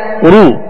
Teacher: دونوں ہونٹوں کو کامل گول کر کے ادا کریں گے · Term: معروف